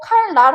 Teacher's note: 칼날이라고 발음하지 않고 칼날이라고 발음하지. 그래서 뒤에 있는 니은을 리을로 바꾸는 현상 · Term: 순행동화